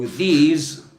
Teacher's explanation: in the case of these, you need to produce vibration in your throat. So, you need to feel you've got a B in your throat like this. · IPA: /ð/